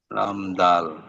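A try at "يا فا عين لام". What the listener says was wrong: দাল না, ইয়া ফা আইন লাম।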